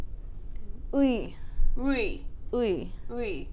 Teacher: Think of like the U sound, the E sound, and then just slide from U to E.